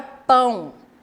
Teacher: quando eu falo a palavra pão, o O tem o som de U. Então, o O, nesse caso, é considerado como semivogal.